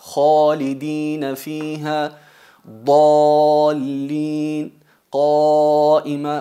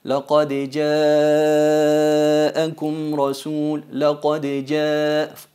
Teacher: Veis que el alif en khalidina es mufajjama, es enfatizada, y en ja'akum es atenuada.